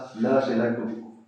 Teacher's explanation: क्योंकि ल को बोलते समय हमारी जीभ के दोनों साइड के भागों से वायु बाहर निकलती है। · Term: पार्श्विक व्यंजन